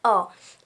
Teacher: इसकी आवाज़ आ और ओ की मिली जुली सी आती है, यानी अ। इसे हम आधा चांद भी कहते हैं क्योंकि ये ऊपर आधा चांद लगा होता है।